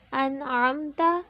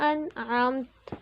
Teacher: نون ساکن یا تنوین کے بعد اگر حروف ہلکی کے 6 حروف حمزہ، ہا، عین، حا، غین، خا میں سے کوئی بھی حرف آ جائے تو وہاں غنہ نہیں کریں گے بلکہ نون ساکن و تنوین کی آواز کو ظاہر کر کے پڑھیں گے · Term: اظہار